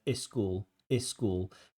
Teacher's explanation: When a word begins with s like school, many candidates want to add a syllable before it and say is school.